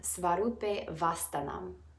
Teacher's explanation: The A sound at the end of rupe, followed by the A sound in avashtanam, run together.